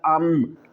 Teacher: جب ساکن ہوگی تو اس سے آگے والا جو حرف ہے اگر وہ با ہوگا تو ہم نون کی آواز نہیں بنائیں گے، ہم میم کی آواز بنا کر پڑھیں گے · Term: اقلاب